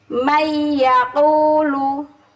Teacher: Man yaqulu tapi jadi mayyaqulu. Jadi nun ini melebur mengikuti huruf sesudahnya. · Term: idgham